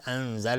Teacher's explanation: انزل اخفای حقیقی نون ساکن به زای